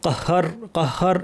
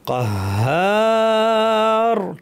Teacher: হায়ের পরে আলিফ আছে টানতে হবে, কাহার কাহার এভাবে না, কাহার টেনে আমরা রকে ভারী করে থামবো।